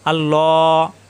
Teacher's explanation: আল্লাহ শব্দের ডানে জবর অথবা পেশ আসলে আল্লাহ শব্দ পুর হয় অর্থাৎ মোটা হয়।